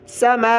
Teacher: बड़ी मद को 5 अलिफ की मिकदार में खींच कर पढ़ा जाता है। इसका मतलब होता है कि आप मद को खींचना शुरू करें और मुट्ठी बंद कर दें और 1 2 3 उंगलियाँ खोलते जाएँ।